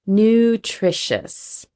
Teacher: That t r sound is going to be a tr almost sounds like a ch.